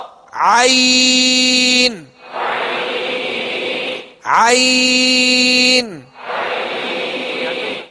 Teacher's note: عین کو وسط حلق سے ادا کریں گے، جہاں سے ہا ادا کیا وہیں سے عین کو ادا کرنا ہے